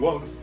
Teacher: un verbo como Walk que se convierte en walks no tiene un sonido vocálico